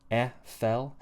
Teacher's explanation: But we're going to start with the word fell, because the e vowel in the word fell, this e vowel sound, short, horizontal space, the lips are slightly spread, e, fell.